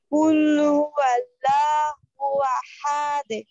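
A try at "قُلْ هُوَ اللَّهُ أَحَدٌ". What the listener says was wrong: আরো মোটা করেন আরো মোটা আবার খুব খেয়াল করেন আমার দিকে তাকান জিহ্বা ভিতরে চলে যাবে কুল হুয়াল্লাহ আবার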